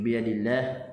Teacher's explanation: kalimah Allah dibaca dengan nipis